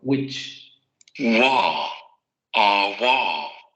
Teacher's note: en inglés estándar, tanto witch, bruja, como witch, cual, se pronunciarían exactamente igual.